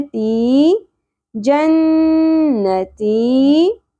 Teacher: تی حرف مدہ ایک الف کے برابر کھینچنا ہے